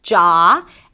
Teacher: it starts with a 'j' sound, that the 'aa' as in father